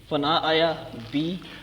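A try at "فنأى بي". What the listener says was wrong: فنا آیا نہیں، فنا بھی،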